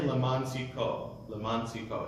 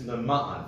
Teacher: there's the ayin, which means a glottal stop. So we don't want to say leman tzidko, leman tzidko.